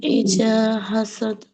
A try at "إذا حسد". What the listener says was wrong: ইজা কেন? ইজা নরম করে পড়তে হবে জাল। ওমিন শাররি হাসিদিন ইজা হাসাদ। একটু ধাক্কা দিয়ে পড়তে হবে আর কি, ঠিক আছে?